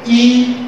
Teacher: जिभ्या बीच में आ गई और सर्वाधिक ऊंचाई पर पहुंच गई